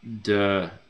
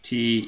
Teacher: that droning sound is kind of the operation of the vocal cords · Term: voiced